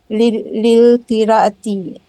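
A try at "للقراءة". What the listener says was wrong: Bagus, nah bagus. Lil qira'ati, bagus Ibu.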